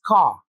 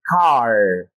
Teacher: the sound R is mostly not pronounced at the end of words while using British English. But in American English, the sound R is clearly pronounced. For example, the word C-A-R is pronounced as ca in British English. · the sound R is not pronounced at the end of words in British English, but they are pronounced clearly in American English.